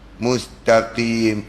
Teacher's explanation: Ke belakang sikit daripada mahraj kaf tu keluar huruf qaf, sama-sama dekat nama mahraj lahwiyah. Pangkal daun lidah dekat langit lembut, dan dia ada sifat qalqalah, dan jangan dia qalqalahkan sebab dia tak sukun.